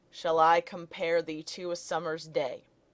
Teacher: It's unstressed syllables followed by stressed syllables in pairs. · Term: Iambic meter